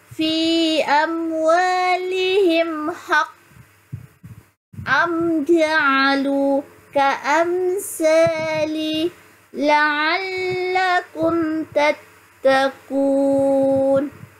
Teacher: Mim mati. Dia baca dengan jelas tanpa dengung. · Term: Izhar syafawi